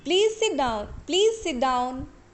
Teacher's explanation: Please sit down. Here we are using rising tone.